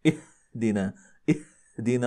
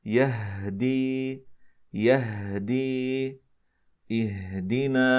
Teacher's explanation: وليس تطلب ان نباعد بين الوترين الصوتيين كثيرا حتى نخرج لها انما هو عباره عن تباعد جزئيا حتى نسمح لاحتكاك بسيطا بين الوترين الصوتيين وبهذا الاحتكاك يخرج صوت الهاء